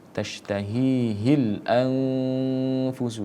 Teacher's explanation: Tashtahihil anfusu, sama nun mati bertemu dengan huruf fa, hukum bacaannya adalah ikhfa ya. Kita harus siap untuk membaca huruf fa-nya, tapi harus kita dengungkan terlebih dahulu.